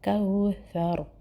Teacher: کاف کو لام سے ملائیں گے اور جو کاف اور واو کو ملائیں گے اور ثا باریک ہوگا، را موٹا ہوگا۔